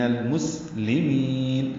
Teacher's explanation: لام باریک ہے اور میم کو لمبا کریں گے